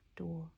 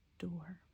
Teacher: that or sound is a vocalic R. So it's with an open O and then or door.